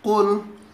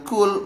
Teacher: Qaf harus kita bedakan dengan kaf, karena mereka berdua berdekatan tempat makhrajul hurufnya atau keluar hurufnya. Kalau qaf itu pangkal lidah sedikit ke depan, sedangkan kalau kaf belakang pangkal lidah sedikit ke belakang.